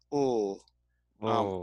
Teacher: But the sound is actually going through the sides of the tongue. Ul. Not through the middle. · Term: lateral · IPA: /l/